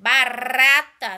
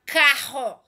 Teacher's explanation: com R entre vogais tem um som brando, tá certo? Som brando. RR tem um som forte.